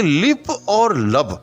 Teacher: دونوں ہی ہونٹوں سے ادا ہوتے ہیں